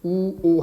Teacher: 우오 할 때는 입이 오므라지죠